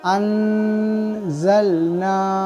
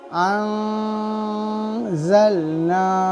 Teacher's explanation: نون ساکن تنوین کی آواز ناک میں چھپانا ہے. نون ساکن تنوین کی آواز پوری طریقے سے ظاہر نہیں کرنے کو ہی ہم اکفا کہتے ہیں.